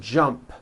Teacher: So, let's look at the word jump, for example. The final sound in jump is a P, which is unvoiced.